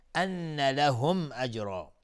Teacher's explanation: ان نون مشدد دو حرکت غنه میدیم